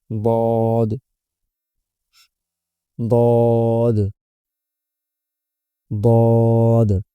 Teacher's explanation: জিবার গোড়ার কিনারা উপরের মাড়ির দাঁতের গোড়ার সঙ্গে লাগাইয়া।